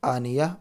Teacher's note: گول والی تا پر وقف کرتے ہیں تو وقف کی حالت میں یہ ہائے ساکنہ بن جاتی ہے